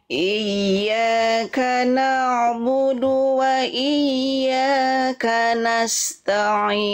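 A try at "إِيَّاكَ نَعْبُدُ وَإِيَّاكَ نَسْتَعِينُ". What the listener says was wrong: Nah, ta dan ainnya jangan jadi ta'in. Ya, jadi jangan ta. Tapi ta. Iyyaka na'budu wa iyyaka nasta'in.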